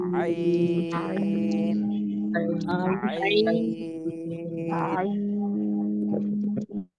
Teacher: আইন এটাও কণ্ঠনালীর মধ্যখান থেকে হবে কিন্তু চার আলিফ টান দিতে হবে এটা আইন চাপ দিয়ে গলার মাঝখানে চাপ দিয়ে গলার মাঝখানে একটু